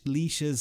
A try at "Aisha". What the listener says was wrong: There's an I in the banner there. Is it Aisha?